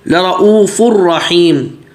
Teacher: لرؤوف الرحیم، ابھی تنوین آ رہا ہے، اس کے بعد جو ہے وہ را میں مل جائے گا، وہ تنوین را میں مدغم ہو گیا، وہ نہیں پڑھا جا رہا